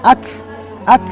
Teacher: Tempatnya adalah lisan yang belakang di bawah makhrajnya qaf sedikit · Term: aqsal lisan